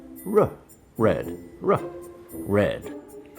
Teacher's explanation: the tongue doesn't touch and your lips are a little rounded at the start.